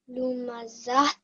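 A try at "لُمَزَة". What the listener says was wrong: Okay, there is no ta sound at the end when you do a waqf. The ta marbuta becomes a ha sakin, so it will be read like this, darling. Lumazah.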